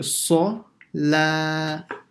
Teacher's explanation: an sa, full mouth, la, empty mouth